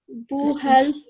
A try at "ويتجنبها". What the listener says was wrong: So you can see here, you are saying hubal. It's ba followed by ha.